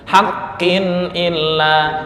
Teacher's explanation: haqqin illa nggak boleh dengung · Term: Idhar halqi